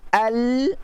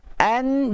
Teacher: Kalau kita an, dia naik sikit. Kalau lam, al, ada ke depan sikit. Kalau nun, ke belakang sikit lidah kita.